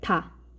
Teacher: 다 하는 순간, 다라고 발음하는 순간 혀가 윗니 바로 뒷부분에 있는 불룩 튀어나온 그 앞부분, 바로 잇몸 그 부분에 혀가 닿았다가 떨어지는 것을 느낄 수 있을 거예요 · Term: 잇몸 소리